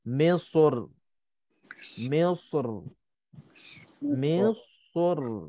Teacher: Kalau tipis, selepas muncung sad itu kita nak kena tarik bibir mulut kita, nak kena tipiskan ra.